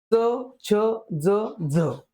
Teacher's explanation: जर विचारलं दंतमलीय वर्ण किती तर चार च छ ज झ यांचा उच्चार होताना दंतम म्हणजे दाताच्या मुळाकडे आपली जीभ जाते